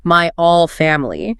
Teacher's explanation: okay, dropped H, he means my whole family